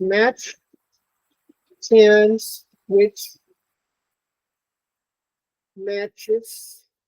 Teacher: It has a voiceless equivalent, which is it starts out as a t, but is released as a sh.